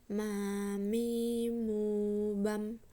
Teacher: dikeluarkan dengan cara merapatkan bibir kita. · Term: huruf mim